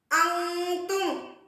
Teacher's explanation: நூனே சாக்கினுக்கு பின்னால என்ன கொடுத்துட்டாங்க, இஹ்ஃபாவுடைய 15 எழுத்துக்கள்ல ஒன்று தா வந்திருக்கிறதால நூனே சாக்கின் உள்ள நூனை மூக்கில் மறைத்து குன்னா செய்து ஓத வேண்டும். இது ஒரு அலிஃப் அளவுக்கு தான் நம்ம அழுத்தணும்னு சொல்லியிருக்காங்க.